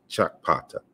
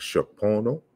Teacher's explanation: the K and the P sounds are, you know, it's a double articulated sound, so they're pronounced together, or really fast, because you really can't really pronounce them together, but it's Chakpata, right?